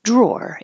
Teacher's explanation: your jaw opens and your tongue is flat, and then curls back for the R.